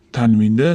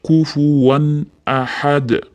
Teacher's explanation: o'zi izhor qoidasida tanvinda nuni aniq bildirib o'qiladi